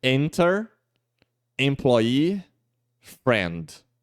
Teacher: o M e o N, eles mudam as vogais, porque ele nasaliza mais